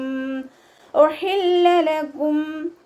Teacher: ഹ എന്നുള്ള അക്ഷരത്തിൻ്റെ സൗണ്ട് തൊണ്ടയുടെ മധ്യഭാഗത്തു നിന്ന് കൊണ്ടുവരിക. ഹ എന്നായി പോവരുത്, ഉഹില്ല എന്നാവരുത്.